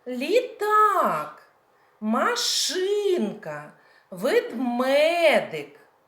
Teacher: наголос в цих назвах іграшок падає на другий склад